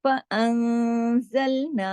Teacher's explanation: نون ساکن کے بعد زائے ہے اس لیے یہاں پہ بھی اخفا ہوا